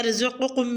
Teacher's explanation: رزقکم میں را اور قاف کو پر یعنی موٹا ادا کریں